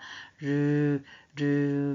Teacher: 혀끝을 잇몸에 가볍게 대었다가 떼어내면서 혀끝을 윗잇몸에 댄 채 공기를 그 양옆으로 흘려 보내면서 내는 소리입니다. 르 하면서 입안도 올리면서 공기가 그쵸 옆으로 흘러나오더라. 자, 흐를 유자를 써서 유음이라고 합니다.